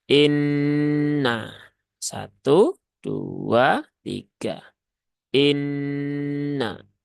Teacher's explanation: bertasdid maka ini hukumnya adalah ghunah musyaddadah ya ghunah musyaddadah yaitu bacaan ghunah yang terjadi karena sebabnya ada tasdid maka ditahan dulu ya tiga harakat sempurnakan ghunahnya